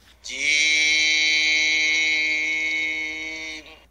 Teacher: এই হরফটি বলতে 4 আলিফ পরিমাণ লম্বা হবে, জিহ্বার মাঝখান উপরের তালুতে উঠবে, শক্ত সবল আওয়াজ হবে